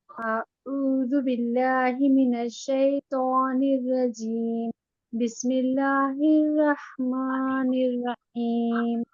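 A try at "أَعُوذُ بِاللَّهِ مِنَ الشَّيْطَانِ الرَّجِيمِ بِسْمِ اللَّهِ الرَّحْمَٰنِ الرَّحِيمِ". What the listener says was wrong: देखिए अऊज़ु में जाल की अदायगी थोड़ी सी और प्रैक्टिस करिएगा, और रहमान में बड़ी हा की अदायगी, ठीक है। रहमान रहीम, ठीक है।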